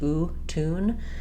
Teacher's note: There's no y sound in it. It's just oo, tune.